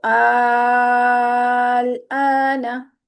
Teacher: तो आल आना तो आ को दो हरकत खींचेंगे। आ जो शुरू वाला है उसको लंबा करेंगे क्योंकि वह मदे लाजिम है। आगे जज्म आ रही है।